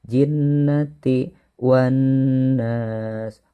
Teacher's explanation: nun ditasydid maka itu disebut dengan gunnah, yaitu ditekan dan juga didengungkan 2 harokat.